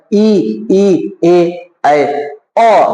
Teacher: जीभ का अगला हिस्सा पर प्रेशर लग रहा है, दाब लग रहा है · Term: अग्र स्वर